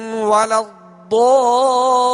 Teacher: ضاد پر مد لازم ہے جسے دراز کریں گے اور کھینچ کر ادا کریں گے